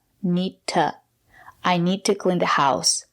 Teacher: To is not stressed. We pronounce it as t, need to.